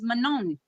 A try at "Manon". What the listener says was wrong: It's Manon. Because in English, you're going to pronounce the N, Manon. But it's Manon. So O-N in French, it's on. On. When you see two letters, one next to each other, and it says O-N, it's on.